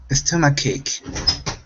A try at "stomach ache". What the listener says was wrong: All right, let's watch that S at the beginning. Now, instead of saying S stomach ache, it's stomach ache.